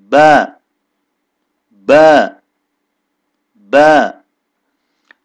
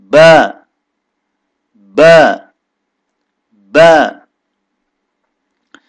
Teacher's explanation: اس میں خاص بات یہ ہے کہ ہونٹوں کو جب آپ جدا کریں گے ملنے کے بعد تو ذرا شدت سے ادا ہوگا